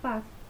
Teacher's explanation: son sordos porque se producen sin vibración de las cuerdas vocales